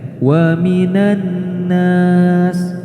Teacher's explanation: Nah, di lafadz wa minan nas terdapat hukum alif lam samsyah. Maka alif lamnya diabaikan, tidak dibaca, langsung nun ketemu nun dan diberi gunnah